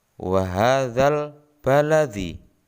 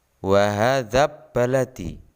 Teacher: Jelas, alnya dibaca jelas, bukan wa hadzab baladi. Jadi dalam bacaan alif lam qamariyah ini huruf lam dibaca jelas.